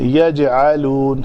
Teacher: جیم کے اوپر کلکلا کریں گے، پتلا کلکلا